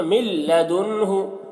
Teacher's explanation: نون میں اظہار ہو رہا ہے تو یہاں پر جلدی کریں گے ہم